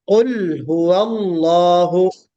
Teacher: बहुत ज़्यादा नहीं है, बस एक कोशिश ये कीजिए कि कुल यहाँ पे कुल फलक में भी और नास में भी बाद हजरात ने लाम पर कलकला कर दिया, तो कोशिश कीजिए कि कलकला ना हो